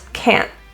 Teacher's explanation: The word can't, that T is pronounced as a glottal T.